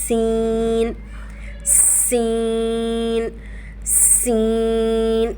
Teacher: سین سین سین. ز کی طرح سین کو پڑھتے ہوئے بھی دانتوں کو جوڑتے ہوئے پہلے سیٹی کی آواز نکالیں گے اور پھر دانتوں کو ہلکا سا کھولیں گے اور ہونٹوں کی شیپ اس طرح سے پھیلا لیں گے تو سین سین سین.